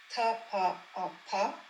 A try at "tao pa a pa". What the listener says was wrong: Alors, tao pa a pa, c'est le même, hein? Tao pa a pa. Alors, tao pa a pa, c'est pas un expiré, hein?